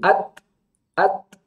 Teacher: ujung lidah kita ke pangkal gigi seri, at, ada bunyi percikan nafas. Sama, sisa nafas yang tertahan di belakang lidah.